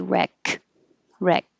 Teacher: when you just say wreck by itself you don't hear the k